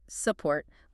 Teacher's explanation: You don't say SUP port, pushing the tongue back. You say support, leaving the tongue dead center.